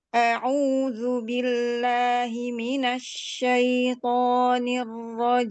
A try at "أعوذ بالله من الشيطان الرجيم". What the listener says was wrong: Udah bagus, cuma di syai ini agak ya-nya terlalu tinggi menaikkan tengah lidahnya, jadi masuk ke hidung.